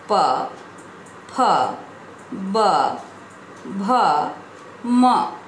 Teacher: जब हम इन व्यंजनों का उच्चारण करते हैं तब वायु कंठ से निकलकर ओष्ठ का स्पर्श करते हुए बाहर निकलती है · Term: प वर्ग